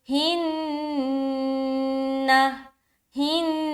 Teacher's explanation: بِأَنفُسِهِنَّ، فو سی ہن، نون میں اتنی رکاوٹ کیوں ہوئی؟ کیونکہ ہم یہاں پر نون مشدد کا غنہ کر رہے ہیں